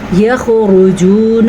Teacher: را کو پر پڑھنا ہے اور واو مدہ ادا کرنا ہے